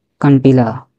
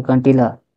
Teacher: है कंटीला ठीक है कंटीला अनुनासिक का आशा यह है कि वायु जो होती है वह नाक व मुंह से होकर बाहर निकलती है